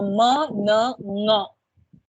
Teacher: It is partially released through the nose. So m, n, ng are sounds that are released through the nose. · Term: nasal sound